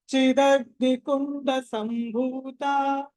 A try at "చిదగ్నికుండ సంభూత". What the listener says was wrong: మళ్ళీ తా అంటున్నారు, తా